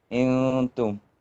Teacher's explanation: We don't touch the noon, but we bring our tongue close to the top, close as possible. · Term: ikhfa